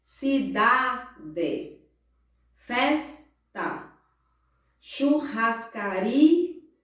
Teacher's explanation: cidade, festa e churrascaria, a penúltima sílaba é a mais forte. Então, ela é paroxítona.